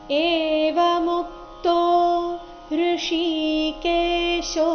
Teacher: ಏವ ಮುಕ್ತೋ ನಲ್ಲಿ ಮು ಮೇಲೆ ಆಘಾತ ಬರಬೇಕು